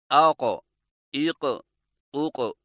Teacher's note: कौफ मोटी और झटके वाली आवाज। अदायगी के वक्त जुबान की जड़ को कौवे के मुत्तसिल तालू पर लगाएं।